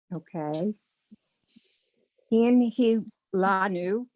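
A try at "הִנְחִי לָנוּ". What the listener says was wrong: Right. Hin chi lanu. Try to get that ch.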